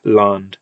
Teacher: So you can see here we actually do have this land with a d at the end, and the reason it's believed to be d as opposed to th is because it's still written with a d, and it makes sense that an n would prevent the d from becoming a fricative